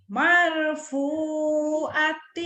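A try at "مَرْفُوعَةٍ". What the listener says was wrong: Kedengarannya mal ya, bukan mal. Mar, R, R, R, mar, mar,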